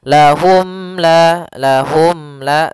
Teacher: izhar syafawi maka untuk panjang izhar maaf untuk cara membacanya yaitu suara mimnya tidak boleh ditahan tidak boleh lahum la tapi akan tetapi dia harus jelas dan